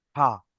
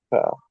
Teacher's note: ফা হবে উপরের দাঁতের আগা আর নিচের ঠোঁটের ভিজা অংশ।